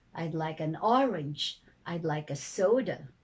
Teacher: the first is the rising falling intonation usually declarative statements